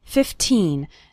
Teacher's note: remember to pronounce the second syllable of 15 nice and strong